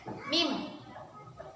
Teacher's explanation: Mim itu kedua bibir menempel.